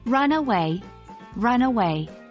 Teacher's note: the stress falls on the second part of the verb